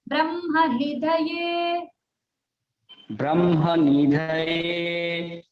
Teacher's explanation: नी को नहीं खींचना, नी दीर्घ नहीं है